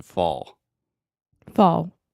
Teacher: the ah combined with the dark L sound almost makes the same sound as the aw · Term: aw sound